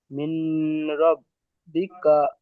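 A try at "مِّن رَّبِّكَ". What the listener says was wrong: মিন নয়, মির রব্বিকা হবে।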